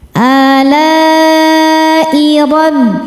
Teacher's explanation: Maka lamnya panjang, boleh 4 boleh 5 harokat. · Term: mad wajib mutasil